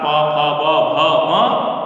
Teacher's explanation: प फ ब भ म और उपधमानीय जो वर्ण हैं उनका उच्चारण स्थान ओष्ठौ, यानी कि दोनों ओष्ठ जो है संयुक्त रूप से होंगे